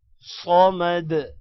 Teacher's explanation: صمد، دال پر قلقلہ ہوگا